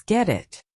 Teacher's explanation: The T in get it becomes a soft D sound. Get it becomes get it.